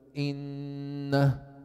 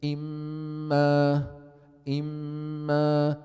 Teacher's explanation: When you say, for example, inna, there is something coming out of the nose. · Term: nasal sound